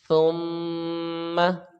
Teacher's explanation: میم کو جلدی پڑھیں گے غنہ کی صورت میں، غنہ کریں گے تو ناک میں آواز چلی جائے گی۔ · سین میں سیٹی کی آواز آتی ہے، یہ حروف صفیریہ میں سے ہے، اور یہ اس کو ہم سا کی آواز نرمی کے ساتھ ہم پڑھیں گے، سیٹی کی آواز یہاں پہ شمار نہیں ہوگی